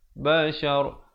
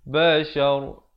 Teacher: Ra di sini dibacakan tebal kerana walaupun dia hidup berbaris, tetapi bila kita pilih untuk waqaf, dia jadi mati mendatang. Kalau ra itu mati mendatang, huruf yang sebelumnya berbaris fathah dibaca tebal.